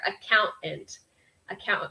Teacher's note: It has that kind of dropped, kind of glottal stop there.